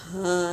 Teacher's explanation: हा सीने से अदा होगा